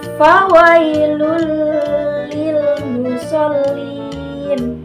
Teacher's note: dibacanya memasukkan suara nun sukun atau tanwin sepenuhnya ke huruf lam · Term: idgham bila guna